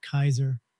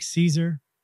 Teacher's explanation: in Latin it's pronounced like Kaiser with a hard C but we anglicize it by pronouncing a soft C